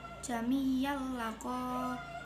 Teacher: bacaan idgham bilahunah sebab fathah tanwin bertemu huruf lam